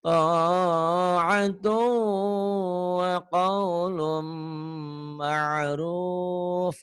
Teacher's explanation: Idgham biguna yang ada gunanya karena mimnya bertasdid.